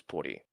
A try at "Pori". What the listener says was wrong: That's not how you pronounce it. It's pronounced Pori, not Puri.